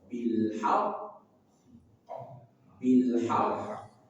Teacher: Kemudian huruf qaf dari pangkal lidah.